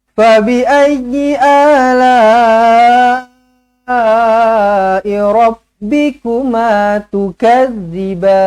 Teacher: A baca dengan 2 harakat, la baca dengan 4 ataupun 5 harakat, mad wajib muttasil, tukadziban zal hujung lidah.